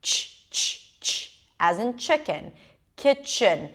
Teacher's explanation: And kitchen, right, has a ch sound. It's actually a T and a sh, as in shine.